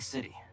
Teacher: flap T. You'll hear in American English all the time.